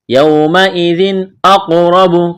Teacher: قلقلہ کریں گے قاف پر، موٹا کرنا ہے قاف کو